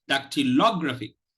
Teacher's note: The primary stress, that is the primary stress, that is that which is stressed the most, that syllable which is stressed the most, is the third syllable